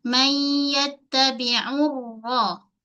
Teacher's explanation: Ra dibaca dengan keadaan tebal.